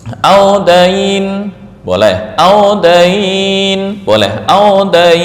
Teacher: Ya, dibaca mad boleh 2 harakat, 4, atau 6 ketika waqaf. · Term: mad lain